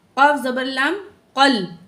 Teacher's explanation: क़ाफ मोटा है, मोटा करके पढ़ेंगे, लाम के साथ जॉइंट हो गई